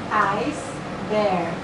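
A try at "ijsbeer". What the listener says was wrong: Você tá falando inglês. Eisbier. Beer. Eisbier. Não é beer, não. Se falar beer, é cerveja. É beer. Beer.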